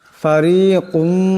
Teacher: রান নিচে জের আছে, এটাকে পাতলা আওয়াজে পড়তে হবে। ফারিকুম এখানে কাপের উপর 2 পেশের তুনবিন, এরপর মিম আসছে, ঈদগাম হয়ে যাবে, ঈদগামের একালে পরিমাণ গুণা হবে।